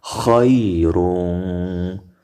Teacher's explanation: یا نرمه خا او را په ډکه خولو او تنوین کې اخفا وشوه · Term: حروف لین